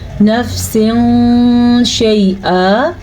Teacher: جب کبھی قرآن مجید میں نون ساکن یا نون تنوین کے بعد والا حرف حروف اخفا میں سے ہوگا تو ہم نون ساکن یا تنوین کی آواز کو چھپا کے پڑھیں گے اور غنّے کے ساتھ پڑھیں گے. اسے کہتے ہیں اخفا.